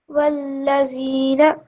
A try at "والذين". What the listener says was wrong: This dhal over here, try say it with the correct pronunciation, which is you touch your tongue to your top teeth. The. Walladhina. Dhina. Okay, so your tongue should touch the tip of your teeth, and it should come out a little bit. Dhina.